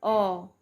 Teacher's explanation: आवृत्तमुखी अ मतलब थोड़ा सा मुंह खुल रहा है